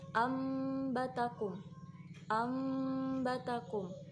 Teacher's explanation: Biasanya di dalam Al-Quran itu ada mim kecil di atas nun sukun. Jadi nun sukunnya tidak terbaca, namun kita membacanya menjadi seperti mim, ambatakum, menjadi mim, ambatakum. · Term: iqlab